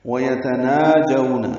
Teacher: نا کھڑا زبر دو حرکات لمبا کریں گے. جو وولین ہے، یہ ڈیڑھ حرکت لمبا کریں گے.